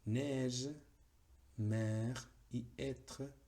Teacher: Neige, mer y être, todas son ejemplos de E abierta.